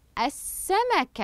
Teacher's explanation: اللام الشمسيه هنا لم اقم بنطقها وبعدها اشتمل حرف السين على حركه الشده